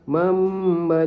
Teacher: Nun digantikan dengan huruf mim yang dibaca denggung dua harakat. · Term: iqlab